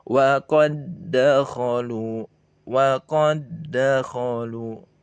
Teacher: kita langsung leburkan dak sukun yang pertama masuk ke dal yang kedua. Sehingga dileburkan, diidghamkan, dimasukkan huruf yang sukunnya ke huruf yang berharokat. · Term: idgham mutamatsilain